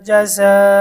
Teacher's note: ঝা এখানে চার আলিফ টান মধ্যে মুত্তাসিল , জবর পর আলিফ মদের হরফ, মদের হরফের পরের হরফে একই